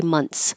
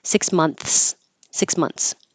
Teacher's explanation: if you leave your tongue behind your teeth, the TH will turn into a T, and that's okay.